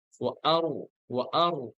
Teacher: আরো যখন বলবো মুখটা গোল হয়ে যাবে, মানে ছড়ানো থাকবে না।